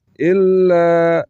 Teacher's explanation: لام مشدد ہے دو مرتبہ پڑھا جائے گا اور لام کے اوپر جو زبر ہے اس کو کھینچ کر پڑھیں گے تاکہ الف کی اواز نکلے الا فا کو یا کے ساتھ